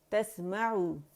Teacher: ہونٹوں کی گولائی سے complete rolling سے ادا ہوگا، اور زبان اس وقت اس طرح اس پوزیشن میں ہوگی، پیچھے سے جڑ اٹھی ہوئی ہوگی، آگے سے نیچے ہوگی